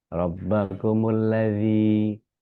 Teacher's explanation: Jangan dibaca da, tapi dia za. Jadi gigi atas ketemu sama lidah.